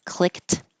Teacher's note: Technically, the ED will sound like a T, clicked, but you're not going to release the airflow, so you don't hear anything. Click. My tongue goes to the T position.